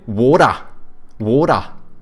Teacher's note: they take like the soft D's from Americans, but they don't pronounce R's